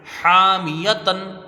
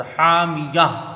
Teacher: ہا کو 1 الف کی مقدار کھینچ کے پڑھیں گے، میم یا کو جلدی پڑھا جائے گا ہا سے ملا کر، حامیہ. تو یہاں وقف بالابدال ہوگا، مد یہاں پر کوئی بھی نہیں بنے گا، حامیہ.